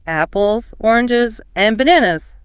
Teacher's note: Rise, rise, fall, signals the list is finished.